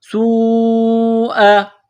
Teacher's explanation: یہاں مد ہے، اس کو لمبی مد کہتے ہیں، 4 الف کی لیمٹ میں اس کو کھینچنا ہے